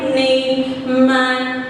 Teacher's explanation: your oral part is closed and the air and the sound, it passed through the nasal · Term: nasal sounds